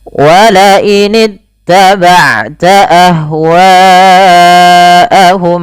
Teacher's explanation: pada lafal ahwa hanya dialirkan nafasnya. Jangan hanya ah.